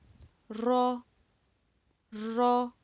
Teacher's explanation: دیکھیں اس کو موٹا اور پر کر کے ادا کیا جائے گا، اگر اس سے پہلے زبر یا پیش ہوگی تب۔ را، رگڑ کھا کے ادا ہوگا، را۔